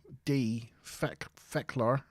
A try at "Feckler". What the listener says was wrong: You were heavy on the A. Feckler.